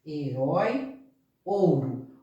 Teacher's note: aquela que não é pronunciada com bastante ênfase intensidade como vogal a semivogal ela tem uma intensidade mais fraca de pronúncia